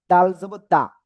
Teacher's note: জিহ্বার আগা সামনের উপরে দুই দাঁতের গোড়ায় লাগিয়ে